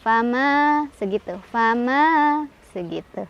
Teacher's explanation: Fama, ma punya hukum mad tabi'i atau mad asli. Karena ada alif, sebelumnya ada huruf berbaris fathah di mim. Cara bacanya panjang 2 harokat. Fama, 2 ya, jangan banyak-banyak.